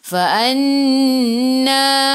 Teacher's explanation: Nun ada sabdu, tekan ke dalam nun dan dengung dua harakat wajibul gunnah.